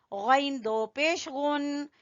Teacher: खा भी गले के सबसे ऊपर वाले हिस्से से और गैन भी गले के ऊपर वाले हिस्से से